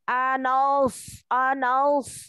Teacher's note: huruf nun itu tipis dan huruf sad itu tebal